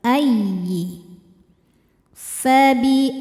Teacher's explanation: tidak ada dengungnya, cukup pakai nabr. Nabr itu menaikkan intonasi suara.